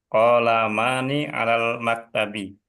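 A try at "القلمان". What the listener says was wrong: Ini ada alif lamnya. Al-qalamani.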